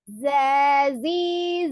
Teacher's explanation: Pertama ada huruf zai ya. Kita tahu makharijul huruf zai itu sendiri adalah ujung lidahnya di antara ujung gigi seri atas dan bawah